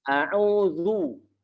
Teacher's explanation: Yang kasroh kita baca secara jelas dengan menarik bibir ke bawah ataupun agak ke belakang sedikit. Yang U dengan cara kita monyongkan bibir kita ke depan